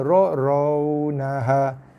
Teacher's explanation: Ra tu bagi kata bunyi ra, tebal, bulat bunyi dia, ra bukan ra.